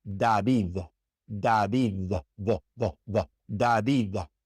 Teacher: But if it's not at the beginning of the word, the D in Spanish is like a TH in English, such as in that same name. The first D is a D, like the D in English, but the second D is a TH